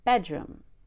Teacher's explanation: Bedroom, very relaxing, falling down on the word room.